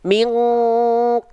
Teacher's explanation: jarak yang jauh maka mengakibatkan apa mengakibatkan dengungannya Adena dengungannya kuat Kenapa dengungannya kuat karena dia makhrjnya jauh sehingga menghasilkan bunyi Eng · ketika ketemu Q dan Kaf dia bunyinya baru menyerupai Eng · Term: dengungan yang kuat